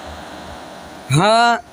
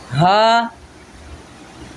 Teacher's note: ہا سینے سے ادا ہوگا۔